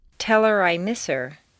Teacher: on personal pronouns it's common to drop the H